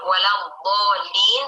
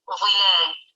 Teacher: beberapa orang Arab mengucapkan salah dari huruf dhad ke huruf dha